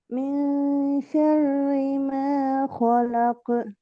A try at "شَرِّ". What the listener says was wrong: ராட sound தெரிய வருது இல்லையே. ஷர்ரி ம ஷர்ரி அல்ல ஷர்ரி ரி ரா ரி ரா ரி அந்த சவுண்ட் ஓதல்ல தெளிவா வரணும். அல்ல ஷர்ரி அது வல்லினம். ஷர்ரி அல்ல ஷர்ரி ஷர்ரி முன்னுக்கு வரணும். ஷர்ரி வல்லினம் அது.